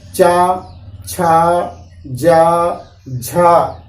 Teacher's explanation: इसके बाद चा वर्ग में तालु, जीभ आपकी जाएगी तालु में टच करेगी।